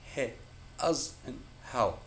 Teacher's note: The sound is simply the friction caused by the air being expelled through the gap between the vocal cords.